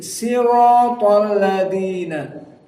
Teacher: sebagian dari qabilah Arab tidak mampu untuk membaca shad, maka dibacalah dalam keadaan sin